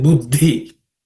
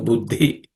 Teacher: The second letter in the combination is aspirated consonant, which is the fourth letter in the varga.